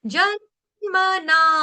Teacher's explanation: मना में ना दीर्घ है यहां पे एक काल का समय आपको उसको सुर को खींचना है